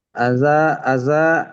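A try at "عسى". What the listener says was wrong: Bukan aza, bukan aza, asa, sa, bukan aza. Asa,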